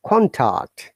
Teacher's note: if you're talking about noun, we have to stress on the first part, first syllable, like contact, noun.